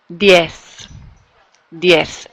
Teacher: that's a good example of when it doesn't buzz, right? It's just an S sound.